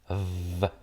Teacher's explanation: V es una labiodental fricativa